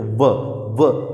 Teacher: ओष्ठ जो है वो दंत को टकराते हुए वहां से बाहर निकलता है, तभी जो है उसकी आवाज़ निकलती है व। · स्थान जो है वो दंत और ओष्ठ दोनों की सहायता से होता है अगर इन दोनों की सहायता नहीं ली जाए तो व का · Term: दंतोष्ठ, वकार